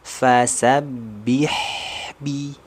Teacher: di situ ada aliran suara sempurna enggak boleh terjedah tidak boleh terpantul karena sifat karakter dari huruf ha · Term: sifat rakhaah